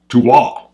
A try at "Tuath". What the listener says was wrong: Tuath. Yeah, the TH on the end is silent.